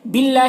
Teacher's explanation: اللہ کے لام کو باریک پڑھنا ہے اور کھڑا زبر ہے جو الف مدہ کی طرح ہے۔